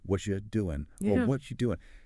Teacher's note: you often becomes yah. It flows together.